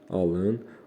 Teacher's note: Onda vurğu əvvəldə olur, əmr formasında olanda.